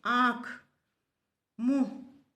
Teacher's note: हवा नाक और मुख दोनों से बाहर आती है।